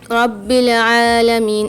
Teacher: الحمد للہ رب العالمین، با کے اوپر مشدد ہے تو یہاں پر ہم سختی اور جماؤں کے ساتھ پڑھیں گے با کو۔ عالمین میں عین کے اوپر کھڑا زبر ہے، اس کو بھی عین کو کھینچیں گے، رب العالمین، اور حلق سے آواز نکالیں گے، حلق کے درمیانی حصے سے عین کی۔